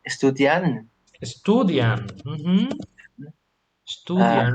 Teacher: Remember the stress on the second syllable